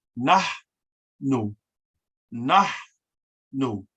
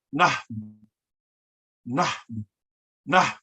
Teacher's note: An aspirant H in Nuwaubic, just as in Arabic, is when you actually breathe out as you pronounce the H.